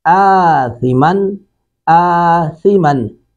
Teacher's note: تھا کا مخرج آپ کو معلوم ہے کہ دونوں دانتوں کے درمیان میں زبان کی نوک جب آتی ہے تو یہ تھا ادا ہوتا ہے